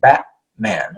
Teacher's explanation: it's like you're starting something, but you're stopping it in the back of your throat, okay? So it's like I can't even get far enough up to make the T sound. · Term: glottal stop